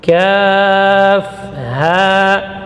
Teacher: kaf itu tipis, berarti tidak terangkat suara ke langit-langit, berarti dia mengalir dari bawah. Kaf, ha, tipis.